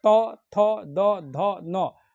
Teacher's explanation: दांत का स्पर्श होता है जीभ से